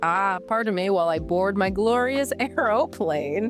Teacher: But to shift up for comedy, a comedian might puff out their chest, lift their nose in the air, and say in a very British exaggerated voice, "Ah, pardon me while I board my glorious aeroplane." >> Making it three exaggerated syllables just to sound fancy.